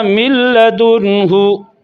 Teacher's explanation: نون لام میں داخل ہو رہا ہے غنہ کے بغیر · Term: ادغام بلا غنہ